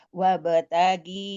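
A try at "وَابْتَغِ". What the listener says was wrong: fi Ghifi, bukan kalau dibaca wabtaghi itu seakan-akan ada ya sukun kan? Nah, ada nggak di situ? Nah, sehingga jangan dibaca ditahan, jangan tertahan, jangan wabtaghi fi. Nah, fi-nya yang dibaca panjang tertahan. Fi-nya 2 harf.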